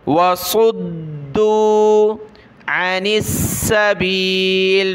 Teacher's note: दाल को सख्त करेंगे तशदीद है और सौद को हमने मोटा पढ़ना है